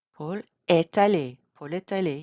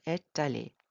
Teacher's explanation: You have the liaison because it's in front of a vowel.